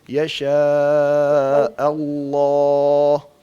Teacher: تو حمزہ کو آپ لام کی تفخیم کے ساتھ ملا کے موٹا نہ کریں، حمزہ کو الگ باریک پڑھیں اور پھر لفظ اللہ کا لام موٹا کر کے پڑھیں